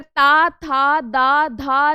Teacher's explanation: दंत ध्वनियां वो होती हैं जिनके उच्चारण में जीभ दांतों के पिछले भाग को छूती है। आप अगर ता, था, दा, धा ना बोलेंगे तो जो हमारा जिह्वा है वो दांत के पिछले वाले भाग को स्पर्श कर रहा है कि नहीं कर रहा है।